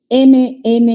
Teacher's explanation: pasa el aire y egresa por las fosas nasales